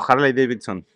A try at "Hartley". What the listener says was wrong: No, porque llevo una T antes de la L. Hartley.